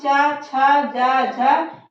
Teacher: स्पर्श में संघर्ष करते हुए बाहर निकल रहा है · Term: स्पर्श संघर्षी व्यंजन